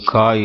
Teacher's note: அடிநாக்கு மேல் அண்ணத்தின் அடிப்பகுதியை ஒட்டும்போது கா என்னும் எழுத்து பிறக்கிறது